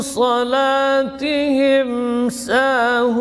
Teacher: mim sukun ketemu dengan sin juga izhar ya, izhar syafawi, bibirnya rapat dan ditekan.